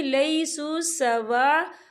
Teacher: खाली अलिफ से पहले ज़बर है और इस पर मद भी है, तो हम इसे 4 हरकत के बराबर खींच के पढ़ेंगे